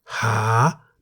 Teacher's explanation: The single syllable in the word Ha is a live syllable because it ends with a long vowel sara-a. The initial consonant H is a high-class consonant, therefore based on the tone rules for a live syllable, Ha is in the rising tone.